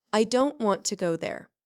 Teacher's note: The small words I, to, there are soft and quick.